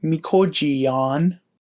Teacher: Our glottal stop example is mikoji, and from here we change the glottal stop to a Y sound and then add our suffix. So our verb is pronounced mikojiyan.